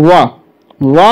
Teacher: दंतोष्ठ यानी दंत और ओष्ठ दोनों से उच्चारित ध्वनि जो है दंतोष्ठ कहलाती है दोस्तों। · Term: दंतोष्ठ ध्वनि